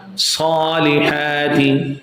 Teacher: We'll stretch both places, Sad and Ha, equal to 2 counts, 2 haraka. Salihati. If you fail to stretch both places, Sa and Ha, then automatically you will start stretching the last word, last letter Tha.